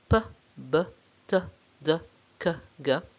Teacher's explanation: The third manner of articulation that we have is where we block the air completely, we obstruct the flow of the air completely in the mouth and the nose, and then we build up a lot of pressure and suddenly release that air. So there's a little explosion that causes a sharp noise. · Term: plosives or the stops